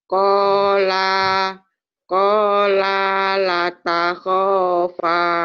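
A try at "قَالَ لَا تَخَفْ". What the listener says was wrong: panjang la-nya ketuker. La yang pertama justru pendek. Yang la kedua baru panjang, Bu.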